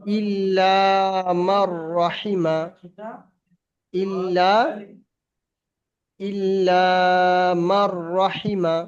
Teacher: দেখতে পাচ্ছেন নুন বাদ যাচ্ছে ফের